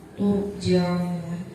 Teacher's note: Di situ ada ro sukun didahului dengan huruf ta yang berharakat dhamma, maka cara bacanya tebal.